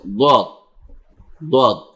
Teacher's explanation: এরপর আপনি দাল যেমনি উচ্চারণ করেন দোয়াদই হবে। এটা দোয়াদ যখন এটা উচ্চারণ করতে যাবেন দুই পাশে লেগে যাবে · দেখুন দোয়াদ জোয়াও না দালও না, দোয়াদ উচ্চারণ আপনি করুন, আল্লাহর ওয়াস্তে জিহ্বাটা নিচে রাখুন, পুরো জিহ্বাটা নিচে রাখুন, সম্পূর্ণটা জিহ্বার আগা হইতে শুরু করে পুরোটা নিচে রাখুন, অর্থাৎ দাঁতের নিচের নিচের পাটির দাঁতের ভিতরে রাখুন। দোয়াদ যেমন আমি দেখছিলাম, আপনারা দেখাচ্ছি দোয়াদ, দোয়াদ অর্থাৎ নিচে রাখছি।